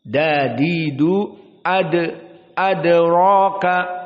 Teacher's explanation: Wa ma ad baru masuk kepada hamzah. Adapun adraka maka dal di sini sakinah, dal termasuk huruf qalqalah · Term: al-qalqalah as-sughra